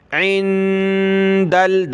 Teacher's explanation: نون ساکن ہے، ناک میں آواز پیدا کریں گے اور دال کو لام کے ساتھ ملانا ہے